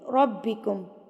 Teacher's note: را کے اوپر جب زبر آ جاتی ہے تو را ہیوی یعنی کہ پر پڑا جاتا ہے. پر پڑھنے کا طریقہ میں بتا چکی ہوں کہ ہونٹوں کو تھوڑا سا گلائی کی طرف لے کے آئیں گے، گول نہیں کرنا لیکن تھوڑا سا پاؤٹ شیپ میں لے کے آئیں گے، یعنی کہ گولائی میں آپ اس کو ہونٹوں کو لے کے آئیں گے تو را کی ادائیگی ہوگی.